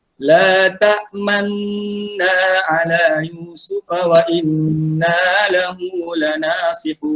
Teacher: Ismam ini maksudnya dimuncungkan mulut.